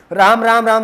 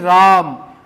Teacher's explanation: राम राम राम 3 बार नहीं, राम, आ का स्वर ही 3 बार खींचना है आपको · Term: प्लूत स्वर